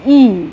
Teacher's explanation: উচ্চ স্বরধ্বনি এগুলো উচ্চারণের সময় জীব সবচেয়ে উপরে উঠে